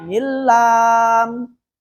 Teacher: Kemudian selanjutnya ada idgham bila gunna. No dengung. Tidak pakai dengung.